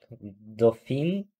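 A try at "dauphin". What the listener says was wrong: Нет. И Н, это носовой звук Н.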